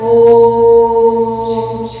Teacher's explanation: अब देखो लुप्त स्वर, यानी इसमें देखो दो चीजें हैं, दीर्घ से दुगना, दीर्घ से दुगना समय और ह्रस्व से तिगुना समय लगता है इसको बोलने में